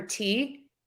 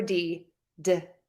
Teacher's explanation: we have the T sound which is voiceless or unvoiced and that is if you touch your throat you don't feel any vibration yes you may feel air moving through there that's normal but